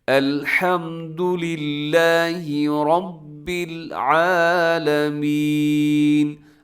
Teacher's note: آگے ہے عالمین، آئین کا خیال رکھنا ہے خاص طور پہ، اکثر لوگ عالمین کر دیتے ہیں، یعنی آئین کی جگہ حمزہ ہو جاتا ہے